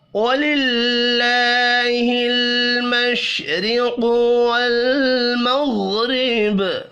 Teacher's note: مشرق را کو زیر کی وجہ سے باریک پڑھیں گے